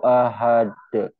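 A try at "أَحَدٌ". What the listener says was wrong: Bagus Pak. Sip ya.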